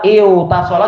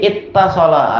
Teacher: Kalimat lafadznya jadi lebih pendek, cukup dengan satu tak, tapi taknya ditasdid. Fatudghamu fi, maka tak yang pertama diidghamkan, dimasukkan kepada tak yang kedua.